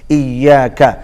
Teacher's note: ایاکا چھوٹا کاف ہے، قا نہیں ہے. ایاکا کا قا نہیں بولیں گے.